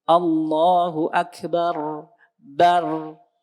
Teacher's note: Jadi kalau takbir ada sifat bainiyah pada ro sukun.